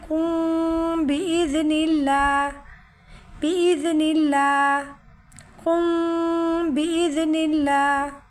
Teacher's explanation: میم ساکن کے بعد با آ جائے تو یہاں اخفاء شفیع ہوگا، یعنی چھپا کر ہونٹوں سے اخفاء کریں گے، اور دونوں ہونٹوں کو مکمل بند نہیں کریں گے بلکہ تھوڑی جھیری آئے گی ہونٹوں میں